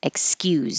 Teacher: if it's the verb it's going to sound like a z